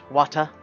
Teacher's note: Hard T's and dropped R sounds very posh.